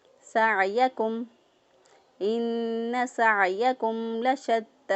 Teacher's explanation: سین کو ادا کرتے وقت سٹی جیسی آواز آنی چاہیے